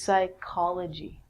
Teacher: is study so psychology is the study of the mind and actually we say this like a k so this is psychology with the silent p